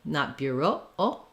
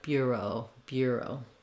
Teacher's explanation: the second syllable o is going to be a little shorter be careful not to be too short though because it is a diphthong o so you want to relax and close the lips as you go